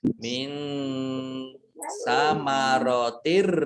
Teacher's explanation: Ini tidak mendengung, langsung masuk ro, ada ditandai ada tasjid. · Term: idgham bila gunnah